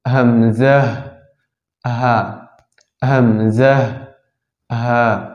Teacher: 1 নম্বর মাখরাজ হলকে শুরু হইতে হামজাহ হা